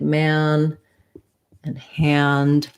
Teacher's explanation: we have to be open for the ah and then closed for the m our jaw closes and our tongue lifts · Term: black cat vowel